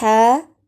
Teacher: ہا، حلق کے درمیان سے ادا ہوتا ہے